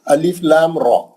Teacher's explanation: 6 حرکت اس کے لام کے اور 2 حرکت کھڑے زبر کے، جملہ 8 حرکت